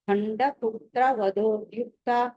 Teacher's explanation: ద్యుక్త అని త దగ్గర విడదీసినప్పుడు మీరు దీర్ఘం పలకూడదు దీర్ఘం రాకూడదు ఓకే తర్వాత మంత్రిన్యంబా మంత్రిణ్యంబా విరచిత విరచిత మంత్రిణ్యంబా మంత్రిణ్యంబా విరచిత